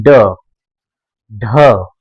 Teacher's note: जीभ एक बार ऊपर जाती है, मूर्धा के बाद जाके फंसती है और झटके से नीचे की तरफ आती है, जैसे कि वहां से इसको धक्का देके बाहर किया जा रहा हो, उछाल दिया गया हो।